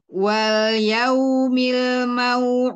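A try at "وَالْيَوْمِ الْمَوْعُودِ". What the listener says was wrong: Ya, hati-hati ke hidung, keluarkan lagi. Wal yaumil mau'ud.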